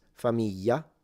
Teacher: In the south it becomes familia. So it's a Y familia.